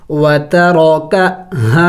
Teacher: را زبر را کاف زبر کا وترو کا یہاں پہ دیکھیں را کے اوپر زبر ہے اور را خود موٹے حروف میں سے ہے تو اس کو موٹا پڑھیں گے